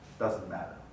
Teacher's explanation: The N is a good example of a syllabic nasal